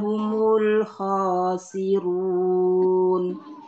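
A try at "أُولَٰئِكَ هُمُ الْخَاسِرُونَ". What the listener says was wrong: khosirunnya panjang harusnya yang terakhir khosirun iya Patah panjang.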